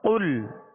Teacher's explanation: قاف لام پیش قل، قاف پر پڑھیں گے اس لیے کہ یہ حروف مستعلیہ میں سے ہے، اور لام کا جو سکون ہے، جزم ہے، اس میں جنبش پیدا نہ ہو